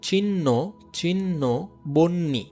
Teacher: এক্ষেত্রে দেখো হ থাকার কারণে এটা ন উচ্চারণ হচ্ছে, পাশাপাশি এটা মহাপ্রাণ হচ্ছে।